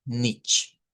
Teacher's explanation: no de la ch del español, sino una ch eh que es un poco más suave